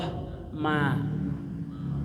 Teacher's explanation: Ma mim itu letaknya bibir bibir dua gitu jadi dirapatkan dulu